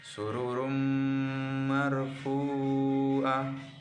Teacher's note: Yang ketiga, sururum marfu'ah. Huruf roh, huruf tanwin bertemu dengan huruf mim, maka dibaca dengan lebur dengan dengung